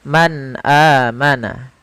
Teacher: suara nunnya harus jelas tidak boleh ditahan tidak boleh Man amana tidak tapi langsung saja Man amana kemudian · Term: izhar